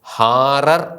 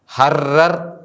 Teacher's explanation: ഹൃസ്വ സ്വരത്തിനു ശേഷം വരുന്ന സ്വരമുള്ള ആലപ്പ് ഹേ ഹേസ് എ റീഷ് എന്നിവ ഇരട്ടിക്കുന്നതിനു പകരം ദീർഘിക്കുന്നു